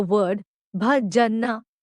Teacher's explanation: it can be best described as the sound of ba in the word bat, but a lot breathier